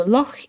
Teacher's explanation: this sound this ch that you make in your throat this doesn't exist elsewhere in english it's a scottish word as it says in the text loch